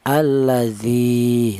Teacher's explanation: Jadi alladzi ini panjangnya ya dzi ini mad thaobi panjangnya yaitu satu alif atau dua harakat atau dua ketukan ya alladzi seperti itu. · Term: mad thabi'i